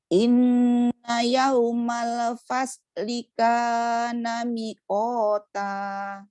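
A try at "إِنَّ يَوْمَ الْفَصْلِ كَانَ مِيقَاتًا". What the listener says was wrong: Mi-nya panjang. Ada ya dia.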